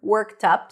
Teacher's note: stresses on the second part of the phrase worked up on the word up